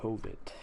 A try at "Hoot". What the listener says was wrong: It's Hoot, and I guess the V is silent, so...